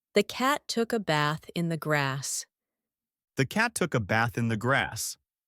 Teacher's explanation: For me, cat, bath, and grass all have the exact same A vowel sound.